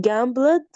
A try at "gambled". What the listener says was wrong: Can you remove the E sound? Gambled.